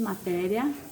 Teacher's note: Um outro exemplo aqui, matéria. Sua penúltima sílaba é a mais forte. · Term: sílaba tônica